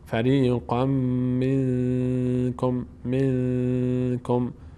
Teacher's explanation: اینجا هم نون ساکن علامت ساکنش اخفا شده، چون بعد از نون ساکن کاف آمده و قاعده اخفا اجرا میشه.